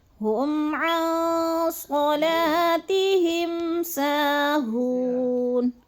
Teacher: میم ساکن کے بعد عین آ جائے تو اظہار شفوی ہوتا ہے، غنہ نہیں کرتے